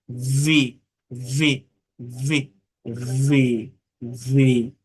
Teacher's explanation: এফ এবং ভি বলার সময় মনে রাখবেন আপনার উপরের দাঁত অবশ্যই নিচের ঠোঁটকে স্পর্শ করবে। এটি না করলে উচ্চারণ ব্রিটিশ বা আমেরিকানদের মতো হবে না।